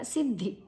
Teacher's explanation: ಸ ಮತ್ತು ದ ಅಲ್ಪಪ್ರಾಣ, ಧಿ ಮಹಾಪ್ರಾಣ, ಅಡಿ ಒತ್ತು ಮಹಾಪ್ರಾಣ ಇದೆ